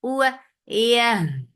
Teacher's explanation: Keep ya very soft. You are not touching the palate with your tongue.